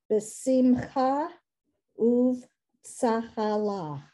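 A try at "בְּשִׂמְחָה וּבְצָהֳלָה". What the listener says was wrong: Beautiful, b'tzachala. You did that one perfectly.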